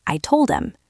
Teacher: When these words are not the most important word in a sentence, we often drop the H entirely and connect the previous word directly to the vowel. This is why it's so hard to understand when someone says, "I told him." If you are waiting to hear the H in him, you will be waiting forever.